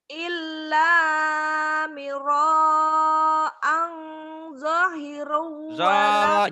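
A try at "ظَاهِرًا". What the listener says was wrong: Nya panjang. Zahiro.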